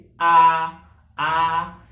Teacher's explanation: देख, विपरीत स्वर ऐसे स्वर जिनके उच्चारण में मुख द्वार जो है पूरा खुला हो उसे विपरीत स्वर या खुला स्वर कहते हैं। जैसे आ, इसमें मुख द्वार जो है पूरा खुला है तो आ जो है ये विपरीत स्वर है।